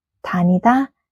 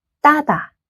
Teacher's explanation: 쌍디귿 is made with extra pressure on your tongue.